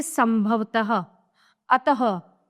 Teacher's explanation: विसर्ग इसका उच्चारण ह की तरह किया जाता है